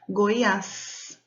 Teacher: a última sílaba, as, tem um acento, a sílaba mais forte.